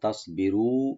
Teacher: সোয়াটাকে একটু আমরা মোটা করে বলবো